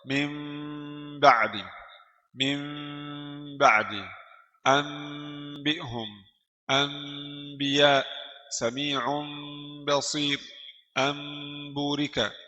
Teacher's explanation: Rapat saja 2 bibir. Jadi mim 2 bibir saya sudah rapat ya. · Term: iqlab